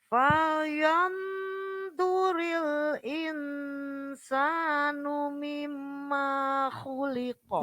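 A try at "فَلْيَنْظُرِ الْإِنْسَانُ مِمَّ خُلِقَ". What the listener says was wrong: Jadi manya pendek. Mimma khuliqa.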